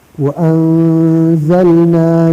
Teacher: اگر تنوین یا نون ساکن کے بعد حرف اخفا آئے تو نون کی آواز کو ناک میں چھپا کر پڑھنا چاہیے